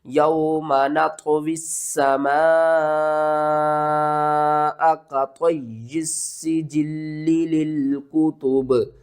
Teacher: وقف کی صورت میں با کے نیچے زیر ختم ہو جائے گی تو با ساکن ہوگا اور یہاں پر قلقلہ ہوگا